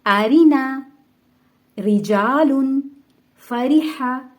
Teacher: اس میں را کو باریک پڑھا گیا ہے